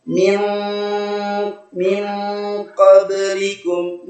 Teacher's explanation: Dan mohon perhatikan, qaf ini huruf tebal, huruf isti'la sama dengan huruf shad, dad, ta dan dha. Qaf ini huruf tebal, maka ketika dia ikhfa maka harus tebal dibaca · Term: ikhfa haqiqi